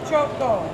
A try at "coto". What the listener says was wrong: Without the H shirt, C-O-T-O.